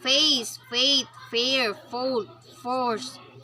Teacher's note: The labiodental fricatives. Voiceless labiodental fricative.